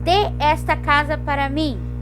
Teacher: eu tô dando ênfase no verbo de, porque é uma ordem, ele é imperativo, então ele é tônico. Se ele é tônico, eu tenho que acentuar.